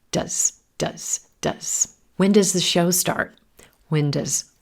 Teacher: Now, when does is the helping verb, it reduces. You still hear the same sound, but it's very quick. It becomes the schwa.